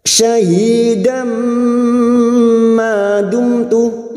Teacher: Dum mim sukun bertemu ta idhar safawi mim sukun dibaca jelas tanpa mendengung